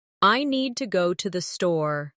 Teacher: The stress is on need and store. While to and the are softer and faster. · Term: rhythm